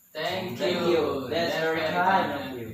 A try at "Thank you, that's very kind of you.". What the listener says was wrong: Nah ya, harus ada intonasinya. Coba lagi sekali lagi.